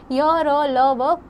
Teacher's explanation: बोलते समय जीभ मुख के किसी भी भाग को पूरी तरह स्पर्श नहीं करती है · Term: अंतस्थ व्यंजन